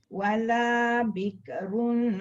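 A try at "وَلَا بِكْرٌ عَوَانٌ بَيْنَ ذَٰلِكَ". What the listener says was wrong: Dia tak boleh ada suara lepas mati bik. Ada ke tu tak boleh. Wala bik.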